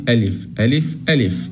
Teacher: حرف الألف ما بنمده تماما